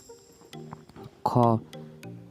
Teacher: ख उच्चारण प्रयत्नको आधारमा स्पर्शी हो। घोषत्वको आधारमा अघोष हो।